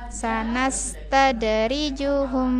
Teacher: ada huruf qalqalah, huruf dal dipantulkan